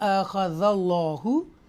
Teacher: اللہ کے نام سے پہلے زبر ہے، اس کو تفخیم کے ساتھ پڑھیں گے، موٹا پڑھیں گے